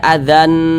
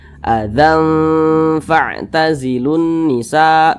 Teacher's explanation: nun dengan huruf Fa Ini dia di tengah-tengah nah sehingga ini cara membacanya itu disamarkan kemudian didengungkan jangan jangan dibaca Azan tapi disamarkan nah azanazilun Nisa begitu kemudian